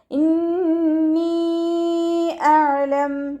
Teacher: അയിനിൻ്റെ മഖ്റജ് വസത്തുൽ ഹൽഖ്, തൊണ്ടയുടെ മധ്യഭാഗം.